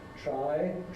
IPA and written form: traɪ (try)